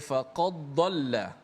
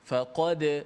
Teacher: Izhar dengan masuk dijelaskan matinya. Dal itu dijelaskan mati dengan jelaskan makhraj dal yang mati dengan bunyi qalqalahnya. Faqad itu masuk dal tu dijelaskan matinya.